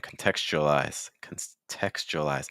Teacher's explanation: when you have a T that is followed by that U sound or a Y or things like that, that T is instead going to become a ch sound.